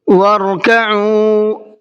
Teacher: وَارْكَعُوا را کو منہ بھر کے پڑھنا ہے